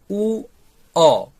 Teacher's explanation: যুক্তাক্ষরে ব্যবহৃত অন্তস্থ বয়ের উচ্চারণ উ অ এইভাবে হয়। অন্যদিকে যখন ব স্বাভাবিক বর্ণ হিসেবে ব্যবহৃত হবে তখন এর উচ্চারণ ভ হিসেবে হবে।